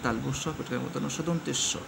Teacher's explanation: বললাম এক্ষুনি উষম এর মধ্যে শীষ ধ্বনি থাকে তালবস পেটের মধ্যন্স এই তিনটে স উচ্চারণ করার সময় শীষ দেওয়ার মতন ধ্বনি বের হয়